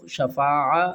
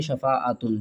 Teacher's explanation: جب ہم سٹاپ کریں گے تو ہا کو پڑھیں گے، جب آگے کنٹینیو تلاوت کریں گے تو پھر ہم تا کو پڑھیں گے. یہاں پر رکیں گے تو شفاعہ، اگر نہیں رکیں گے شفاعتن.